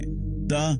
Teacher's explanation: लेकिन जब यही एयर कहीं रुक जाती है जैसे प बोलते वक्त लिप्स बंद हो जाते हैं। त बोलते वक्त टंग टीथ के पास टच करती है